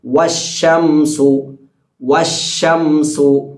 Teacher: വാവ് പറയുമ്പോൾ ചുണ്ട് മുൻപിലേക്ക് കൂർപ്പിച്ചിട്ടാണ് വാവിന്റെ മഹ്റജ്